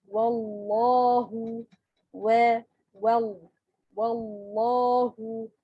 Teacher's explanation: the lam in the word of Allah will be pronounced with a full mouth, heavy